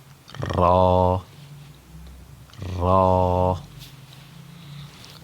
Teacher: را کا جو مخرج ہے وہ زبان کا جو اگلا سرا ہے اس کو اوپر تالو کے ساتھ لگائیں گے اور زبان کے اندر ایک قسم کی تھر تھراہٹ کو پیدا کرنا ہے. لیکن اس بات کا بھی خیال رہے کہ زیادہ تھر تھراہٹ بھی پیدا نہیں کرنی، نہیں تو ایک را کی جگہ کئی را ادا ہو جائیں گی.